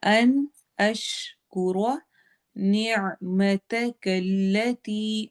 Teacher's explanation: اش شین کو کلیئر پڑھنا ہے، ش کی آواز ہوگی اور روا کو موٹا کرنا ہے